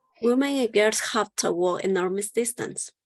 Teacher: So notice that when you use or when you pronounce the modal have to in a sentence, you don't use the strong form of to. You use the weak form. And the weak form is the schwa.